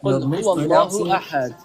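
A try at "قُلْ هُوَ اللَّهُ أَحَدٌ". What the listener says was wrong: You're mispronouncing the qaf. Please say it correctly.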